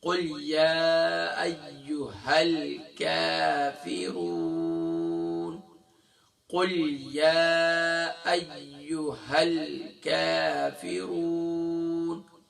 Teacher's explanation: زبان کی جڑ اور تالو کا سخت حصہ یہاں سے باریک کاف ادا ہوتا ہے